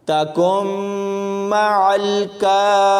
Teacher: اس میں نون ساکن کو نہیں پڑھیں گے، کاف کو میم کے ساتھ ملائیں گے، اور یہاں ادغام بالغنہ ہوگا